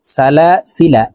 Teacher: জবরের বাম পাশে খালি আলিফ থাকা সত্ত্বেও এখানে টান দেওয়া যাবে না, কারণ যখন জবরের বাম পাশে খালি আলিফের উপরে এই চিহ্নটি থাকবে, এই যে গোল একটি চিহ্ন, এই চিহ্নটির নাম হলো হরফে জাইদা।